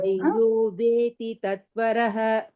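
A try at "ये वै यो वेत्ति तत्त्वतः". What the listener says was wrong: Veti tatvatah. Veti. Two tas are there. Veti tatvatah.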